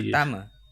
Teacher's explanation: Final A is usually pronounced as a schwa in Malay, at least in Malaysia.